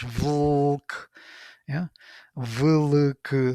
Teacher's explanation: No, it is L sound, which is, we have it in Czech language, Vlk. Yeah, Vlk, three consonants, where L is vowel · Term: L vowel